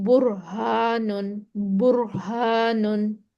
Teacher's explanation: ये हा जो है ये हमने सीने से निकालनी है